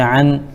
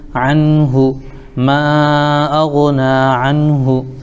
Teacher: نون کو ظاہر کر کے جلد پڑھیں گے، اس کو اظہار کہتے ہیں ، جیسے عن اور ہا پر پیش ہے تو ہو، عنہ،